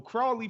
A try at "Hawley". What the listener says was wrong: Hawley with the H.